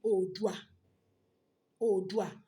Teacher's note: A rí wípé ìró u àti ìró wí òun la pajẹ. But tá a bá sọ wípé Oòduà instead of Odùduwà is the same thing torí pé ìtumọ̀ rẹ̀ ṣì wà ní kíkún despite pé a pa ìró méjì jẹ. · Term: ìpàrójẹ